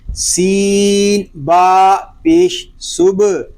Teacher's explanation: صبح با ساکن میں کلکلا ہوگا، اس کو صبح نہیں پڑھیں گے، سین کے اندر سیڈی کی آواز بھی آئے گی.